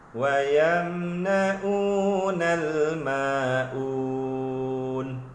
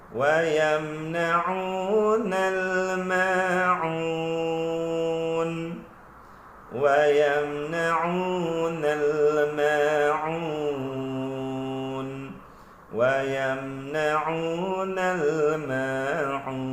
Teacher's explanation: bacaan yang kurang tepat ataupun salah dia baca bertukar huruf ain itu bertukar menjadi hamzah